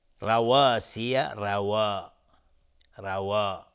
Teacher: روا اینجا الف تابع واو هست و نازک تلفظ میشه، ولی را چون فتحه داره غلیظ تلفظ میشه